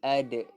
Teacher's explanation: Dal mati akan jadinya qalqalah sughra.